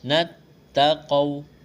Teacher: واو ساکن سے پہلے زبر ہے، واو لین ہے، بغیر کھینچ کے پڑھنا ہے